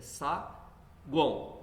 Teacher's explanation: No tritongo, eu tenho sempre uma vogal só, que é a do meio. O U no saguão é semivogal, o A é vogal e o O é semivogal.